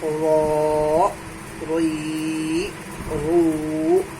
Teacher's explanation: زبان کا کنارہ ڈار سے ملتا ہے تو را ادا ہوتا ہے